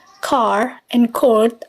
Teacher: two things can be noted here the first one is length the vowels of car and chord are usually reduced in length they are not as long as their RP equivalents so car and Court are more like their General American variants